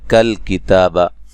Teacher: کاف کو باریک پڑھیں گے، لام کو ہلانا نہیں ہے